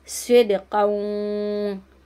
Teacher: स्विद यहाँ पे सीन को नहीं पड़ेगा, स्वाद को मोटा करके स्विद दाल की आवाज़ पलट कर आएगी